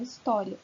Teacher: E no final dela, vocês vão reparar que nós temos ia, ou seja, nós temos uma semivogal mais uma vogal, um ditongo.